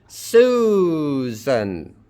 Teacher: The main thing here is that it's a diphthong. The first one is a vowel. The second one is a W or a J. It's a W in this case. Stress on the first syllable.